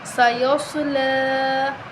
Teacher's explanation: سیصلا، سواد کی آواز نکالیں، سواد موٹا حروف ہے، حروف مستعلیہ ہے، لام کے اوپر کھڑی زبر ہے، ایک الف کے برابر لمبا کریں گے